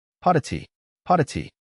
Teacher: The double T cluster can start to buzz and vibrate if you say it fast enough with enough air.